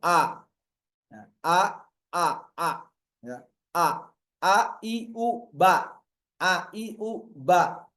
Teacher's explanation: cara membacanya A Hamzah terbuka. A a ya mulutnya terbuka lebar.